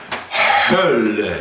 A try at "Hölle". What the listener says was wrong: Ja, aber mehr H. Hölle, richtig tief.